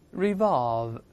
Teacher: 中间字母▁v▁是上牙触下唇发▁v，▁最后这个动作还是停留在▁v▁这个动作